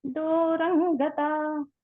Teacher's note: దూరంగతాః అన్నప్పుడు దూరం దగ్గర పెదాలు కలపకుండా చెప్పండి.